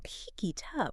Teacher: the T at the end of it links to the U and up. So it comes out sounding almost like one word. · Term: connected speech